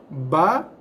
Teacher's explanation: ba, ba keluarnya daripada dua bibir kan